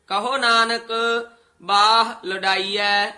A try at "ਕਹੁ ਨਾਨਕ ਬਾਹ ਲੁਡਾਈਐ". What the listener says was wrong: ਕਹੁ ਹੋੜਾ ਨਹੀਂ ਲਾਉਣਾ